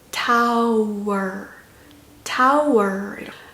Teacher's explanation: 이 W가 모음의 끝소리이기도 하면서 자음으로 또 시작하기도 해요